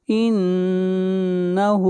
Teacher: ما یمسکہن الا الرحمن، ما یمسکہن الا الرحمن، انہ، نون کے اوپر شد ہے، غنہ ہوگا، ہا کو کھینچ کر پڑھیں گے، ہا کے اوپر الٹا پیش ہے